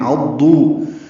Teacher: عضوا عین وسط حلق سے ادا کریں گے